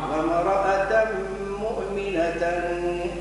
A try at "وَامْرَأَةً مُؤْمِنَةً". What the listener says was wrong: أظهر التمين. للنبي إن بين الهمزة القطعية يلا انتبه الهمزة.